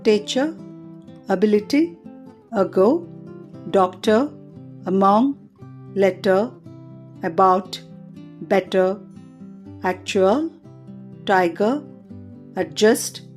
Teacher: లెట్ said తర్వాత short vowels లో నాలుగవది [సంగీతం] అ అనే ధ్వని వోకల్ ట్రాక్ట్ యొక్క మధ్య భాగంలో వ్యక్తీకరించబడుతుంది పెదాలు పాక్షికంగా తెరవబడి ఉంటాయి